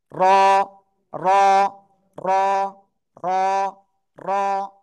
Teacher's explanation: জিব্বার আগার পিঠ উপরে তালুর সাথে লাগবে, লাগিয়ে মোটা আওয়াজে, এরকম মোটা আওয়াজে একালিপ টেনে উচ্চারণ করতে হবে। কি বললাম? জিব্বার আগার পিঠ তার বরাবর উপরে তালুর সাথে লাগিয়ে। · জিব্বার আগার পিঠ তার বরাবর উপরে তালুর সাথে লাগাবো, লাগিয়ে মোটা আওয়াজে উচ্চারণ করব।